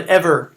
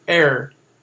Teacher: That's elision. The word ever, 2 syllables, but in Shakespearean language, usually he would shorten it to er